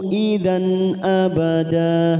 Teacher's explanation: Idan fathah tanwin bertemu Hamzah Idhar halq kita baca jelas